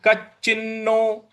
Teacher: क के बाद जो च है इस पर हमको बल लगाना है। कच्चिन्नो। उसके बाद च के बाद जो न है, आधा न है, उस पर भी हमको आघात देना है।